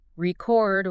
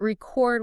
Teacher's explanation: Just shifting the emphasis from the first syllable to the second completely changes the meaning.